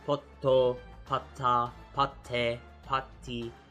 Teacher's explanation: This little extender on the screen right now is a small tsu, and that small tsu is not pronounced as tsu, it's going to be pronounced as the consonant before it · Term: double T sound